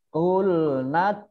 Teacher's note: Dal sukun itu bacaan qalqalah, ya, dibaca memantul